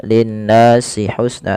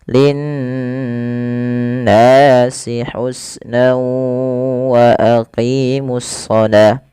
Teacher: Pada lafal nun berharakat tasydid itu wajib ditahan suara n ya. Nah, ini yang kita namakan dengan gunnah.